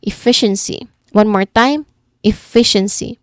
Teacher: The C sound at the end, it sounds like the soft S sound. So there's a hissing sound there.